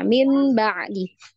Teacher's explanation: nun sukun ya ketemu ba nah ini ada tanda mim di atasnya itu berarti bunyinya Nun ini berubah jadi mim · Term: iqlab